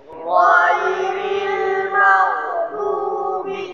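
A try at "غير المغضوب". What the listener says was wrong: huruf dubi jangan dubi du ya dot pinggir lidah tempelkan ke pangkal gigi seri sampai gigi geraham gini bo bo bi bab bab bab bab du bab ghairil maghdubi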